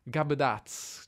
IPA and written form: ɡabəˈdaʦ̮ (tough-headed)